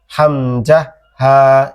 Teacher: কণ্ঠনালীর শুরু হইতে হামজা হা, একদম গভীর থেকে, ঠিক আছে, হালকা চেপে হামজা হা, এভাবে।